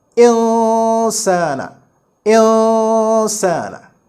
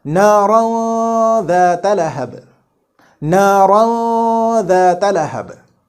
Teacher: we shall conceal this noon in our nose and read it with an ikhfa